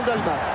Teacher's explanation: on doit dire Dalmat, sans prononcer le T